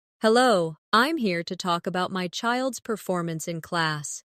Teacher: Stress performance so it's clear what you're discussing.